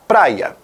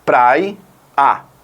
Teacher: esse I que nós temos ali representa uma semivogal e não uma vogal então é por isso que nós chamamos isso de falso hiato